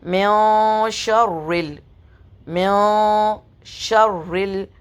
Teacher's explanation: इख्फा का मतलब होता है छुपाना, तो नून की हरकत को हम अपनी नाक में छुपाएंगे।